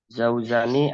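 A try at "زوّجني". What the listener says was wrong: Zawwajani bukan zaujani. fa'ala. Ingat kita lagi bahas pola fa'ala yufa'ilu.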